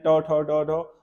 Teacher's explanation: ट ठ ड ढ मुर्धन्य होते हैं